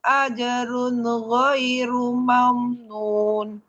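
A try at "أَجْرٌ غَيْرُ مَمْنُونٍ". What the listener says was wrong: Ya, bunyi N-nya jangan ada pantulan. Ajrunna. Runna. Runna. Jangan ada pantulan N. Ajrun. Run.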